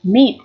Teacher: Đọc là Y, meat. Chúng ta kéo dài cái âm y này ra một chút. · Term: âm y dài